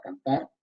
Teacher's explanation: Hay otro cambio en marcha, que es que la R en posición final, ¿verdad? Cantar, se está asibilando